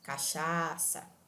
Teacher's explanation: quando eu digo cachaça eu estou prolongando eu estou arrastando a pronúncia do segundo a e mesmo assim eu estou mantendo a pronúncia correta da palavra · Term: vogal tônica